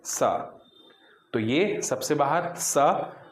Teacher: आपकी जीभ सबसे बाहर यानी दांत को छूने का प्रयास कर रही है लेकिन छू नहीं पा रही।